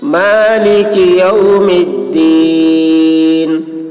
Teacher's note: میم کو دال سے ملا کر پڑھیں گے، مالک یوم الدین، یہاں پر آیت کر رہے ہیں، ٹھہر رہے ہیں، تو جب ٹھہرتے ہیں تو تھوڑا کھینچ کر یہاں پر ٹھہرتے ہیں۔